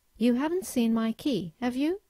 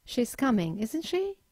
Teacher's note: the first usage of a question tag is to formulate a simple yes no question but in this case you have to use a rising intonation